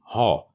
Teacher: হ ধ্বনিটি আমাদের গলার অভ্যন্তরে উচ্চারিত হয় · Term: কণ্ঠ ধ্বনি